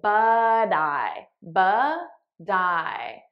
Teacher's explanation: you'll notice I'm saying it as a soft D because that's American pronunciation